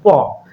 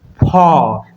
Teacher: মুখের সামনে হাত রেখে পড়ি ফ, তাহলে আমরা দেখতে পাবো বায়ু বেশি পরিমাণে আমাদের হাতে এসে লাগতেছে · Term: মহাপ্রাণ ব্যঞ্জন